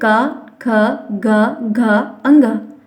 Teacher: इनका उच्चारण कंठ से हो रहा है, मतलब गले से हो रहा है।